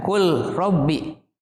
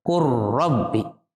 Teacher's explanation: Qur rabbi. Jadi huruf lam sudah dilebur dengan huruf ro, sehingga terdengar hanya huruf ro.